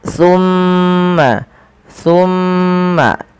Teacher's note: pada lafal tumma tahan suara mimnya sepanjang dua harakat tsumma jangan langsung dilepaskan karena ia ada bacaan gundah pada lafal